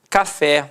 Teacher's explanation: Repare que a sílaba tônica é a última e é terminada em E. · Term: oxítona